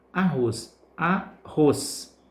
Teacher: Percebe que ros é a sílaba que pronunciamos com mais força, com mais intensidade. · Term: sílaba tônica